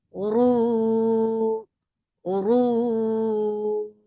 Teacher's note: This temporary sukun has turned this two counts long vowel into four. This is madarat al-sukun, and long vowel should not go into your nose at all.